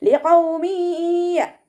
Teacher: നൂനിൻ്റെ തെൻവീനിലുള്ള നൂനിൻ്റെ സൗണ്ടിനെ യായിലേക്ക് ചേർത്തി കൊടുക്കുക